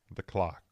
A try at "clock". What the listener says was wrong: You say the clock, with an L.